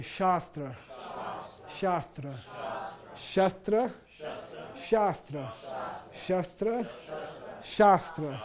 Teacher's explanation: this long a is pronounced as if this were ah in English say shastra sh shastra sh shra shra shastra shra shastra if